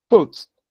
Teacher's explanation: The first one is a bilabial plosive. It's a voiceless bilabial plosive.